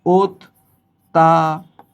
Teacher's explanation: পরবর্তী বর্ণে যদি জফলা থাকে তাহলে শুরুর অটা ও রূপে উচ্চারিত হবে